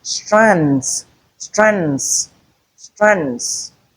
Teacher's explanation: Can also have the structure c three at the beginning, three consonant clusters at the beginning and three consonant clusters at the end